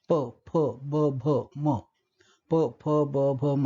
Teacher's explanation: प, फ, ब, भ, म म्हणजे इथे हवा आडवली जाते ओठांच्या जवळ आणि यामुळे या ध्वनींना ओष्ठ ध्वनी असं म्हणतात.